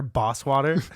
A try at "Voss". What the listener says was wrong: He's like, it's Voss with a V.